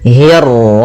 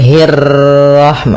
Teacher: Ah, kemudian untuk huruf ro ketika dia berharakat tasydid itu atau dia berharakat sukun dia rnya satu kali takrirnya tidak boleh banyak-banyak tidak boleh hirrahma. · dia ra-nya 1 kali takrirnya, tidak boleh banyak-banyak, tidak boleh hirrahmah, ini kepanjangan. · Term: ro tafkhim, ra tafkhim